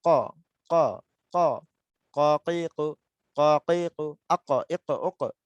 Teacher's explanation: একদম জিহ্বার গোড়া, একদম জিহ্বার গোড়া উপরের তালুর সাথে লেগে যাবে। জিহ্বার গোড়া তার বরাবর উপরে, উপরে বলতে এই যে পাশের যে তালু রয়েছে আমাদের সীমানা, এই সীমানার সাথে লেগে যাবে। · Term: কফ